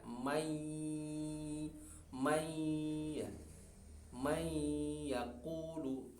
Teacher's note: Kemudian atau ya contohnya, mayakulu, man ketemu yakulu, ya. Asalnya man, maka suara nun hilang atau terlebur ke suara ya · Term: idgham bigunnah